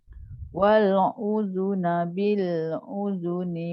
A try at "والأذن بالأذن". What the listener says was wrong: Bawah sikit Hamzah. Dia macam terhampir pada ain. Wal uzuna.